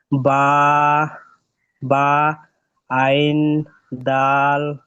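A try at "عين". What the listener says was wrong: আইন তিন আলিফ টান দেন ভাই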